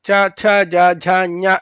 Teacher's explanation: ಚ ಛ ಜ ಝ ಞ ಇದೆಲ್ಲ ಹೇಳುವಾಗ ಪೂರ್ತಿ ನಾಲ್ಗೆ ಆ ಡುಬ್ಬಗೆ ತಾಕತ್ತೆ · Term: ತಾಳವ್ಯಗಳು